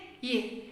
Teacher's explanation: For this palatal to pronounce this Y properly, front of the tongue raised towards the hard palate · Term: voiced palatal